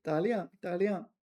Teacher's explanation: maybe liang is second tone, but here it's neutral